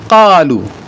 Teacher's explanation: Kalau qaf itu di pangkal lidah paling pangkal sekali.